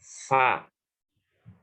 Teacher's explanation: bibir bawah bagian dalam bertemu ujung gigi atas. Fa. Bibir bawah bertemu ujung gigi.